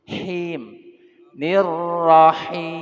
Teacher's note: Si napas angin ditahan di tengah-tengah tenggorokan, mulut atau jauf infitah terbuka.